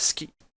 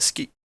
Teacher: it's commonly pronounced ski with the devoicing of the u. There's more complicated shit to say, but this is enough.